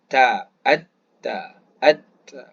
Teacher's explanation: Jadi hujung lidah kita pergi kepada gusi atas. Disebut at, kemudian ta. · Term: huruf ta